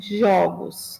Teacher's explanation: Mas no plural, esse O aberto se mantém, jogos.